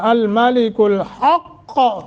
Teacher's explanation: حق قاف کے قلقلہ بھی کرنا ہے